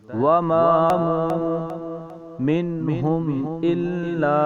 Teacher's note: یہ مد منفصل ہے، اسے ہم 3 یا 4 الف کی مقدار لمبا کریں گے۔